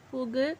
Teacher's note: வல்லினம் அல்லாத உகரங்கள் எப்போதுமே முழுமையாக ஒலிக்கும். இவ்வாறு ஓசை குறையாமல் ஒரு மாத்திரை அளவில் முழுமையாக ஒலிப்பதே முற்றியல் உகரம்.